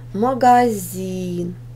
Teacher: ударение ставим над и ударный слог последний